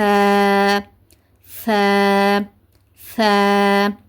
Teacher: நுனிநாக்கை நல்லா கூர்மையாக்கிட்டு மேற்பற்கள் இருக்குல்ல, மேற்பற்களுடைய முதல் 2 பற்கள் இருக்குல்ல, பால் பற்கள்னு சொல்லுவோம்ல, அந்த பால் பற்களுடைய ஓரங்களில் போயிட்டு நம்மளோட நுனிநாக்கை லேசாக பதிக்கணும். அழுத்தமாக பதிக்கக்கூடாது, லேசாக பதிக்கணும்.